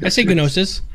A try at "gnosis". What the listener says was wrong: Right, but you don't pronounce the G. You're not supposed to. It's not gnomes. Pronounced gnosis. It's gnosis.